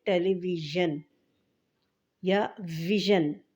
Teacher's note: اچھا، یہ جو ہے نا یہ ژ ہے، جو حرف ہے نا وہ ژ ہے، نہ تو یہ ی ہے نہ ز ہے، بلکہ ان دونوں کے درمیان کی آواز ہے یہ ژ